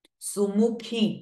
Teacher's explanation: Kha is again Mahaprana sound. Su and mu both are rasva swaras while khi is dirgha swara.